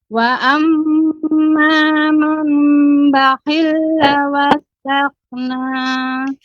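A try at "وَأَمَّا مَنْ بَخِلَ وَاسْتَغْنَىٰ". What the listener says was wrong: Bakhila dibaca dengan cepat Ibu. Bakhila wastaghna. Aghna ya, kemudian termasuk di sini yang bukan panjang, bakhila dibaca dengan pendek, maka tidak dipanjangkan.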